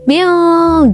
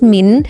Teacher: Nun di sini dibaca samar, tidak jelas, tidak seperti huruf, tidak seperti hukum bacaan izhar tadi ya, Teman-teman. · Cara membaca ikhfa adalah dengan menyamarkan nun sukun atau tanwin menjadi samar-samar antara jelas dan juga berdengung